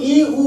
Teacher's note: আমাদের মুখবিবরের ভেতরে ফাঁকা জায়গা থাকে না বললেই চলে, তাই এই দুটো স্বরধ্বনিকে আমরা বলছি সংবৃত স্বর